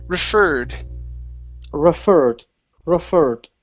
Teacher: the word referred instead of referred okay the stress is on the end of the word